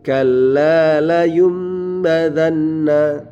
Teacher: Rumusnya sama, apabila ada nun mati dan tanwin bertemu, nun mati atau tanwin bertemu dengan huruf ba, maka cara membacanya nun mati atau tanwinnya ini menjadi huruf mim. Mim ya, menjadi huruf mim disertai dengan dengungan. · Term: iqlab